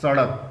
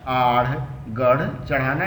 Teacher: उल्टा होकर मूर्धन्य, मूर्धन्य मतलब ऊपर के तालु से लगता हो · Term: द्विस्पृष्ट